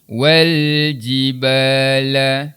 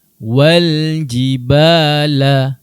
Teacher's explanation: Cara bacaannya pula untuk alif lam qamariah, huruf lam perlu dijelaskan bacaan huruf lamnya.